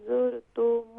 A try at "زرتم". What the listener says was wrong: زرتم نہیں ہے، یہاں پر تا کو بھی شارٹ ساؤنڈ کریں گے، میم کو بھی شارٹ ساؤنڈ کریں گی، تو زرتم